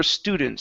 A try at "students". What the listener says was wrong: So less of an ooh. We don't want to push too hard on that ooh. It's students. Nice and light.